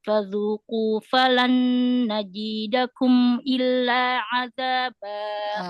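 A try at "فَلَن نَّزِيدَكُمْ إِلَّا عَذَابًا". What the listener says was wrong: Nazi, bukan jim, zai. Diulang.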